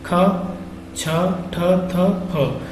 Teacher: तो खा में क्या हुआ, वायु तो ज्यादा निकली लेकिन हमारे गले में झनकार उत्पन्न नहीं हुई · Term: अघोष महाप्राण